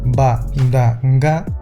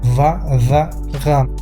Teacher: pasaron de ser plosivas, ba, da, ga, a ser fricativas